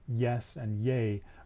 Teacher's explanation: the ye sound the y sound as in yes and yay brings the tongue kind of close to the hard palate